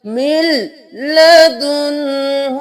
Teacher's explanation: میم کو لام کے ساتھ ملائیں گے